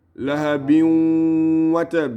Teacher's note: Idgham, with or without ghunna, with or without nasal. Does it have nasal or does it not have nasal? It has nasal.